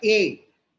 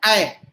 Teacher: ए में थोड़ा खुलता है ए, लेकिन ऐ और खुल जाता है ऐ।